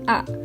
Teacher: Contohnya pada bunyi A, di mana posisi lidahnya berada di depan dan posisi rahangnya berada di bawah, yang mana berarti mulutnya lebih terbuka